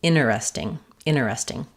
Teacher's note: So, the most common is interesting, three syllables. Sometimes we also though follow the pattern of dropping that T sound.